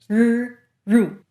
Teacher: But in Mandarin, there is no bunching up and back. All the work is done in the front of the tongue, which pulls all the way back until it's pointing almost vertically towards the hard palate. As your tongue gets closer and closer to the roof of your mouth, you'll start to hear a buzzing sound.